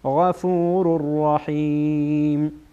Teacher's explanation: بعد از تنوین را آمده را از حروف یرملونه ادغام میشه